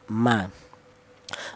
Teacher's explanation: Untuk huruf mim keluarnya huruf berasal dari kedua bibir yang rapat